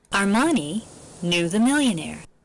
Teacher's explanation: Armani knew the millionaire, they're all pitch accented, and there are two IPs here